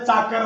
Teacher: चाकर म्हणला चा म्हणजे दंत तालव्य